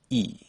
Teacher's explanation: First, start with a tongue position of e with your tongue all the way up and in the front